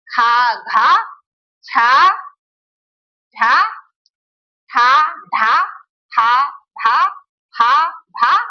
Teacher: जिनके उच्चारण में ज्यादा हवा निकलती है, मुंह से ज्यादा हवा निकलती है, उसे महाप्राण कहते हैं। · क्योंकि इन वर्णों को बोलने में हवा जो है ज्यादा निकलती है, इसीलिए इसे महाप्राण कहते हैं।